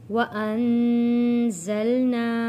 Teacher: سبعا شدادا وجعلنا سراجا وهاجا وانزلنا، نون ساکن پہ غنہ ادا کرنا ہے، زا کو سختی کے ساتھ پڑھنا ہے اور نا حروف مدہ ہے، الف سے پہلے زبر ہے، حروف مدہ ہے، ایک الف کے برابر کھینچ کر پڑھنا ہے